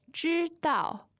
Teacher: 知 道， 知 道 means to know, first and fourth tone.